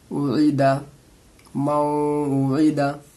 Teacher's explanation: عین کو تھوڑی حلق سے نکالیں گے